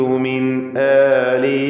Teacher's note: സാക്കിനത്തായ നൂൻ ശേഷം ഹംസ ഇൽഹാർ ഹൽക്കി നൽകി നൂനിനെ മണിക്കാതെ വെളിവാക്കണം